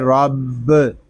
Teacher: با یہ حروف کلکلہ میں سے ہے، اس کو جماؤ کے ساتھ ادا کریں گے۔ رب، اس کو رب اس طرح نہیں پڑھیں گے، اس کو پڑھیں گے رب۔